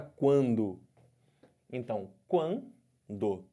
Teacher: do U para o A tá crescendo ditongo crescente · no ditongo nasal som sai pela boca e sai um pouco de som pelo nariz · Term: ditongo crescente nasal